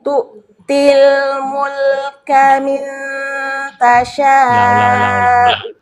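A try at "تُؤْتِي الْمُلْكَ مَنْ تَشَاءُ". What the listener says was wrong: Bukan min tuh, man ini.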